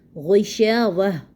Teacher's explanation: جب ہم وقف کریں گے تو تائے مربوطہ کو ہاں میں بدلیں گے